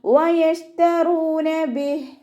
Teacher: വാവ് ഉച്ചരിക്കുന്ന സമയത്ത് ചുണ്ടുകളൊന്ന് സർക്കിൾ ചെയ്ത് പിടിക്കുക.